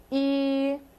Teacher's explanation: It's almost like you're saying ew, but you have to keep your mouth in like a tunnel shape. So you'd say E, like you're gonna blow a whistle, but with the bigger opening in your mouth.